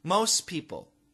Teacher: In this situation, many Americans will actually cancel the T